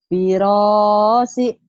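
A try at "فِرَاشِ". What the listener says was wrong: Shin nih. Firashi. Shinnya gitu, Bu. Firashi.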